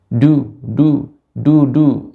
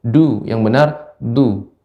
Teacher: kalau dal ujung lidah tepi, benar-benar tepi lidah ujungnya, suara akan lebih terasa kuat, lebih jelas dia suaranya.